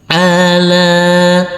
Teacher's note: huruf lam dibaca panjang dengan panjang 2 harokat karena di atasnya ada huruf alif kecil yang berdiri tegak lurus